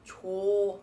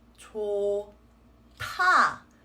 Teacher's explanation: This word will actually be pronounced as 좋다 with a T sound, right? Because the sound of the H, the H sound, will affect the sound of the following D and turn it into a, let's call it an airy sound